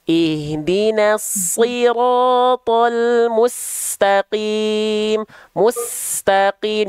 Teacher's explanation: Desisannya, aliran suaranya, aliran nafasnya. Huruf sin kan punya sifat sofir, berdesis.